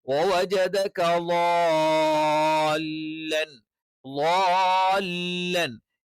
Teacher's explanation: ള നാവിന്റെ വലതുവശം അല്ലെങ്കിൽ ഇടതുവശം ആ ഏരിയയിലുള്ള അണപ്പല്ലിൽ ചേർത്ത് വെച്ചുകൊണ്ടാണ്.